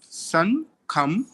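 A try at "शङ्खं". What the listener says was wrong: And this, the first one, this S here has got a accent on it. So it is Sha, Shankham, right? Shankham.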